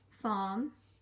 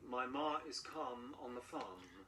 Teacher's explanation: And no R when it's followed by a consonant, like in farm. Farm. So say, my ma is calm on the farm.